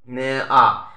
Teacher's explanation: যে স্বরধ্বনি উচ্চারণের সময় জীব মুখের মধ্যে সবচেয়ে নিচে অবস্থান করে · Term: নিম্ন স্বরধ্বনি